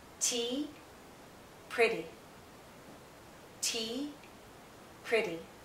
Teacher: anything but it's not stressed this first half of the word this first syllable is stronger this second half is weaker it's not stressed